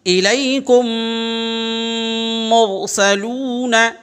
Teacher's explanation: سب میں دیکھیں میم ساکن کے بعد فوراً میم آ رہا ہے، میم ساکن اس کے بعد یہاں میم آ رہا ہے، تو اس کو ہم ادغام شفوی کہتے ہیں۔ ادغام شفوی، اور اس کی آواز ناک میں جاتی ہے۔